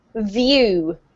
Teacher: When we have the V sound, you can see the difference between my lips when we say body and view. You have to put your teeth against your bottom lip, then you have to release air and vocalize.